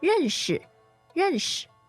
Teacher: Fourth and neutral tone means to meet or to get acquainted with